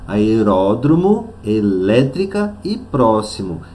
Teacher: a antepenúltima é a sílaba tônica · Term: proparoxítonas